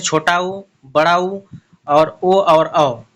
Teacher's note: तो वृत्तमुखी होता है और अवृत्तमुखी होता है। तो जिन स्वरों के उच्चारण में होठ जो है गोला बनाते हैं उन्हें हम वृत्तमुखी कहते हैं।